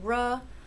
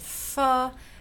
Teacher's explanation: ra, it's a liquid, and it's voiced, and it's alveolar, and fa is a fricative, so we're changing that, and it's voiceless, so we're changing that, and it's labiodental, so it's changing that.